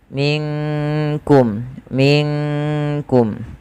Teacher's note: nunnya disamarkan langsung kepada huruf Kaf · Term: Ikhfa abad